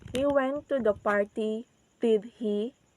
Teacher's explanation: So in the word did, our voice is goes down, and then in the word he, our voice is goes up. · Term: polarized intonation